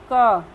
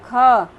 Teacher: मुख द्वारा वायु का निर्गमन अपेक्षाकृत अधिक होना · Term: महाप्राण